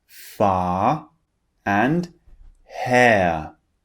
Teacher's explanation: when the r is at the end it just turns into a long vowel sound